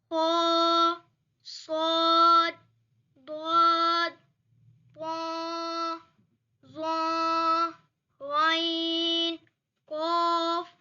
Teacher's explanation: ان 29 حروف میں 7 حروف ایسے ہیں جو ہر حالت میں پر یعنی موٹے پڑھے جاتے ہیں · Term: حروف مستعلیہ